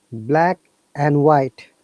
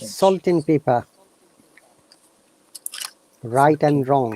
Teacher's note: if and is in the middle of two words we don't pronounce d